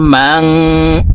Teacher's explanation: এই নুনকে নাকের ভিতরে লুকাইয়া গুন্নার সহিত পড়তে হবে